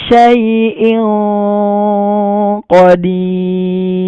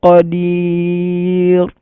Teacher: ada tanwin bertemu huruf qaf, kita samar-samarkan. Kalau huruf qaf itu bunyinya ng